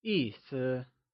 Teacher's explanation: 意 is pronounced using a falling tone and 思 is pronounced using a neutral, soft fading tone